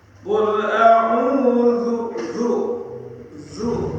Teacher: Ujung lidah ini agak ditahan zu. Beda dengan dal.